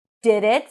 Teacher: So we have lax I here, and then we have it. She doesn't really reduce it to a schwa, just like she does with the for it. She pronounces a clear I sound.